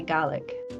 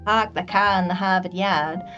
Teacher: you can't really hear the r at all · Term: drop the R